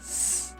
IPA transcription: s